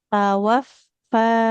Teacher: Lebih dialirkan ibu suara huruf fa-nya